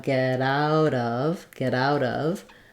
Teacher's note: a flap sounds more like get out get out of and we also link out to of and this also becomes a flap so it sounds more like a d